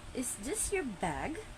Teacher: final Rising intonation how the voice Rises at the end of a sentence common in yes no question like for example asking is this your bag so the rising